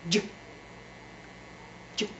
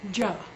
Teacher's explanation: Its sound name is J, J, not Ja, J. It's voiced and staccato.